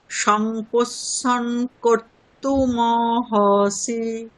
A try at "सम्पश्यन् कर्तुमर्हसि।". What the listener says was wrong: ওখানে একটা ভয়ের উপরে একটা রেফ আছে দেখুন, মারহাসি কর্তুমর্হসি।